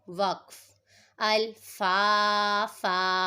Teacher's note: اب اس میں آپ دیکھیں دو زبر کی تنوین کو وقف کی صورت میں ہم نے الف سے بدل دیا ہے